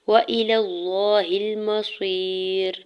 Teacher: حمزہ کی زیر کو بغیر کھینچے ہوئے ادا کریں گے۔ لام کے زبر کو لام جلالہ کے ساتھ ملاتے ہوئے اللہ کے نام کو پر پڑھیں گے اور اوپر کھڑی زبر دو حرکت کھینچ کے بھی ادا کریں گے۔